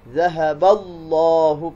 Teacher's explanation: لفظ جلالہ اللہ، اس سے پہلے دیکھیں حرف کے اوپر زبر ہے، حرف کے اوپر زبر ہے، تو لفظ جلالہ سے پہلے زبر ہو یا پیش ہو تو اس کو پر پڑھنا ہے، منہ بھر کے آواز نکالنا ہے